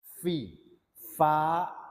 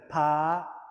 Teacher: sentuhkan gigi atas di bibir dalam sebelah bawah jadi fi